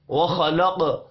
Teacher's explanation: خا اور قاف حروف مستعلیہ ہے، پر پڑے جائیں گے، قاف ساکن پر قلقلہ کریں گے۔